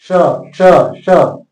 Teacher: मूर्धन्य स बोलेंगे तो इसको मूर्धा से बोलेंगे, आपका जीव मूर्धा में सटना चाहिए, श श श।